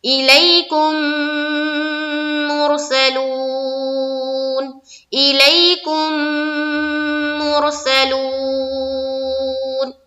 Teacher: میم کو میم سے ملا کر غنہ اور غنہ کے ساتھ پڑھنا ہے، یعنی کہ وہاں پر آواز کو تھوڑی دیر ناک میں روکنی ہے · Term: ادغام شفوی